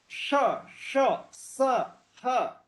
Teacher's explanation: श जो फ्रैक्शन पैदा होता है, इसलिए इनको ऊष्म ध्वनि कहते हैं